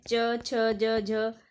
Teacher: जो ध्वनियाँ तालु से बोली जाती हैं उन्हें तालव्य व्यंजन कहते हैं और ये च वर्ग की ध्वनियाँ होती हैं